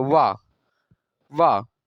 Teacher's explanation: अब जैसे वाह हो गया, तो वाह दंत और ओष्ठ इसमें दोनों का प्रयोग होता है। वाह, वाह, ओठ जो है दांत में जाकर सटता है, तो वाह का उच्चारण स्थान अगर पूछेगा तो दंतोष्ठ आप बताएंगे।